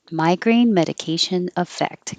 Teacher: Migraine medication effect. Come down at the end.